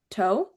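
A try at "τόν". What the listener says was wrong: Almost. Are you saying an N at the end? Tone?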